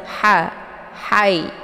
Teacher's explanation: H ini letak posisinya di tenggorokan bagian tengah jadi dia suaranya agak pedas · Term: H kecil